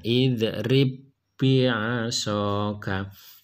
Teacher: Karena ba ini bertemu dengan ba lagi, maka ba-nya harus dimasukkan. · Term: idgham mutamatsilain